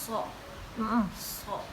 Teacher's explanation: itu ujung lidah ditempel ke gigi atas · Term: huruf so